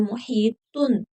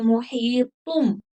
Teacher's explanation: لیکن یہاں پر آگے حرف با آ گیا ہے تو یہاں پر قلب مع الاخفاء ہوگا. نون جو ہے اس کو ہم میم میں تبدیل کر دیں گے. تن نہیں پڑھیں گے.